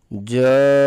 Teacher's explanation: اس کو پڑھنے کا طریقہ یہ ہوگا، جیم زبر الف مد جا، حمزہ زبر جا، اس کو 3 سے 4 الف کے برابر اس مد کو لمبا کریں گے. یہ جیم کے اوپر جو مد بنی ہوئی ہے اس کو مد کہتے ہیں. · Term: مد واجب